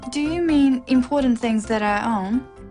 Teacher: It's a yes-no question with a rising tone.